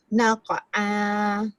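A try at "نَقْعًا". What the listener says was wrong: Naqo'a. Naqo. Dia jangan naqa. Naqo. Naqo'a.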